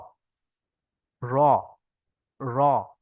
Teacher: এটা এটা হচ্ছে আয়না থেকে প্র্যাকটিস করলে সবচেয়ে সুন্দর হবে। জিভের আগার উল্টো পিঠ এবং তার বরাবর উপরে তালুর সঙ্গে লাগিয়ে উচ্চারণ হয় র।